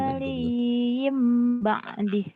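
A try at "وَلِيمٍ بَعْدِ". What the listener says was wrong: Mimnya dibaca lagi ya tuh. Bukan ba'di. Mimnya mana? Waliyim mim. Nun mati ketemu ba iklab. Tapi tadi kamu bacanya mimnya nggak dibaca. Tadi kamu gini. Mim waliyim ba'di. Mimnya nggak dibaca.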